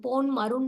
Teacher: ன் மருண்ல வந்து மூணு சுழி இன் வரும் ஆகிய எழுத்துக்களை அடுத்து வருவதால் தனக்குரிய அரை மாத்திரை அளவிலிருந்து குறைந்து கால் மாத்திரை அளவில் ஒலிக்கிறது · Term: மகரக் குறுக்கம்